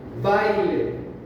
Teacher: carga la voz en la A, entonces no recae la débil, por lo tanto es un diptongo.